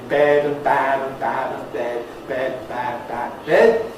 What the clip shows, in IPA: bed : bæd